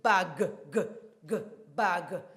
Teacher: word ends in a voiced sound g